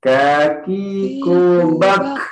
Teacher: untuk huruf kaf ini ya, dia berbeda sifatnya dengan huruf Qaf. Kaf ini dia tidak tebal